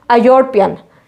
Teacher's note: We should put N before European, but we will not put N, because European is starting with a Y sound. It is not starting with the vowel sound.